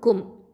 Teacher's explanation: காஃப் அப்படிங்கிறது வந்து அகசல் லிசான் கீழ் நாவை எழுத்து. மீம் அப்படிங்கிறது ஷஃபத்தான் உதல் எழுத்து.